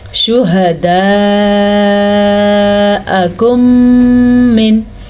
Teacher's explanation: شفوی اس لیے کہتے ہیں کیونکہ میم نکلتا ہی دونوں ہونٹوں سے ہے، اور عربی میں شفتین کہتے ہیں دونوں ہونٹوں کو. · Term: ادغام شفوی